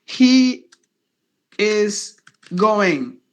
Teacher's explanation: Now here it is S only because before the S you have the vowel, after the S you have a consonant. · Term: S sound only